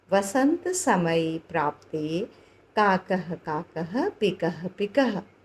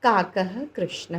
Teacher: बहुत सारे विसर्ग लगे हैं, तो विसर्ग में हमें ह की ध्वनि उच्चारित करनी है।